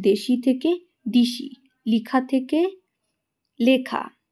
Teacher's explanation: এক্ষেত্রে পরের স্বরধ্বনিগুলো কি ঠিকই আছে কিন্তু আগেরটাই পরিবর্তন হয়ে গেছে। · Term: পরাগত স্বরসঙ্গতি